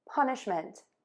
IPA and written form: ˈpʌnɪʃmənt (PUNISHMENT)